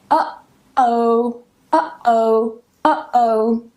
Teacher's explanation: what's happening when I pronounce this is I'm closing my vocal cords here or vocal folds